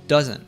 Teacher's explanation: In the word doesn't, there's a combination of the letters NT, and reduces it by dropping the T